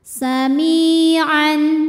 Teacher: cara membacanya mim panjang dua harakat